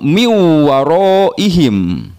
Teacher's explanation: mim bunyi itunya hilang jadi emas Adin ya Wow niwa Rohim nun sukun bertemu dengan Wow jadi dilebur bunyinya hilang langsung ke Wow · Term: Idgham Bighunnah